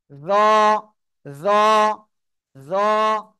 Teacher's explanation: জিহ্বার আগা, সামনের উপরে দুই দাঁতের আগার সাথে লাগান। লাগিয়ে একটু মোটা আওয়াজে উচ্চারণ করতে হবে।